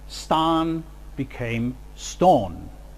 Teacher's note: the raising of the low back vowel A to O